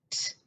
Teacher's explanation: When you say the T sound, the T, I don't feel anything going on my throat